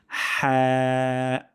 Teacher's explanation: হালক বা কন্ঠনালীর মধ্যকান থেকে একটি বাতাস বের হবে এবং হরফটি এটি হবে পাতলা যেন হা না হয়ে যায়।